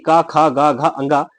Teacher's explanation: तो क वर्ण का कंठ होता है।